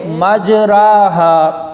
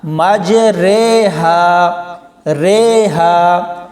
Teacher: تو امالہ کا لغوی معنی ہے جھکانا، مائل کرنا، یعنی اس کا اصطلاحی معنی ہوگا زبر والے حرف کو زیر کی طرف جھکانا، لیکن مکمل نہیں جھکانا، بلکہ زبر اور زیر کے درمیان میں رکھنا ہے، اور اسی طرح الف کو یا کی طرف جھکانا ہے، یعنی زبر کو زیر کی طرف اور الف کو یا کی طرف آدھا جھکانا ہے۔